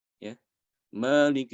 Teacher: dia bisa dengan cara ROM yaitu dibaca seperti ini Ya Malik bacanya cepat kurang dari satu harokat